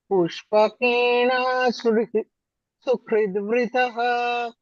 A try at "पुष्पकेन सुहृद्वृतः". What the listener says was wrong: Na is harasva.